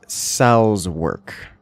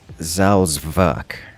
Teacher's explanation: it's got a v, like a hard V sound rather than the W that would be of English, and it's got kind of this almost T, like it's like a hard Z, like a Salzwerk.